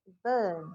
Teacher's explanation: cuman kalau di British R itu lesap atau hilang. Kalau di American dia disebutkan burn, American burn.